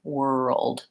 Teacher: So thinking were old, and then again, I have that back L, which kind of has a schwa sound, and my voiced D sound, world. I like to think about it as being two syllables, even though it's a one syllable word, world.